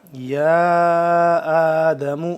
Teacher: یا کھڑا مد زبر یا، لمبا کریں گے 3 الف کے برابر